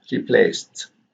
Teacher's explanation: Here the s here becomes the cases, and here we have replaced with t, replaced, because the S here is voiceless, and therefore the ED here is pronounced as t